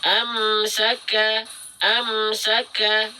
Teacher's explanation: Dalam kondisi sukun menjadi ak ik uk, jangan pakai 'akh', bukan, tapi ak ik uk. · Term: huruf kaf